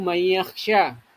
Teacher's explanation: nun sukun ketemu dengan ya. Nah, makanya dibaca masuk dengan mendengung ya. Mayyakhsha itu hukum bacaan idgham bigunah.